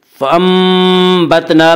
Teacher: فَأَنبَتْنَا میں قلب ہوگا، اس کا قاعدہ یہ ہے کہ نون ساکن اور تنوین کے بعد اگر بائے تو وہاں پہ قلب ہوگا، یعنی نون ساکن اور تنوین کو میم سے بدل کر غنہ کے ساتھ پڑھیں گے۔